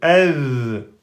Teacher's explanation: Il n'a pas de particularité, le zel soukoun. Il n'est pas qalqala, on n'a pas besoin de bloquer. Il faut juste prolonger le son.